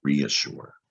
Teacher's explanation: you hear long e and the a is making that tricky like a short u sound uh reassure so it's got the prefix re on the front · This time you hear the E and the A. It's re, you hear long E, and that A is making that tricky, like a short U sound